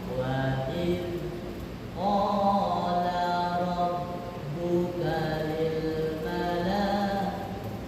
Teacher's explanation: Terkadang kita nggak sadar zal sukun itu bukan qalqalah Pak, sehingga dipantulin.